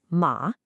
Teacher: It's a 2-1-4. You have to dip way down to the bottom of your vocal range before you rise back up. A really common mistake is not dipping low enough. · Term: third tone